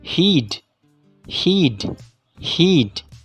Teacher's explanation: the body of the tongue is displaced forwards and upwards in the mouth towards the hard fellate the diagram shows a more extreme version